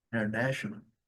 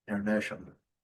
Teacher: esse T pronunciado com esse som aqui, SH